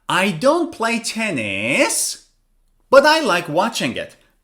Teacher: first your tone of voice goes down then it comes up again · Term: fall rise